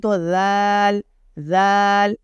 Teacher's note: ذال کو زبان باہر نکال کے ہلکا سا پڑھتے ہیں، دونوں دانتوں کے درمیان سے زبان ہلکی سی باہر رہے گی